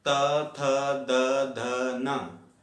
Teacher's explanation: तो दांतों से स्पर्श करने के बाद इनका उच्चारण स्थान हो गया दंत, और दंत के बाद इन्हें कहा जाएगा दंत्य वर्ण।